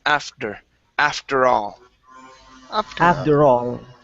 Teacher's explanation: we want to switch that T to a flap D sound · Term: flat D sound